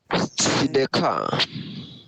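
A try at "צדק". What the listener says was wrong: Well, there's no patach or hey at the end. Sidek. The Sadi is a little bit tricky. It combines a T and an S, like you're about to say T and then you say S. Tss, tss, Sedek, Sidek.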